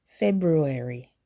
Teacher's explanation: Don't skip the R after the B.